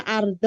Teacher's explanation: arnya dibaca tebal karena sebelumnya fathah